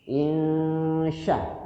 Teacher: Shin itu salah satu huruf hamas yang kalau diucapin keluar napas.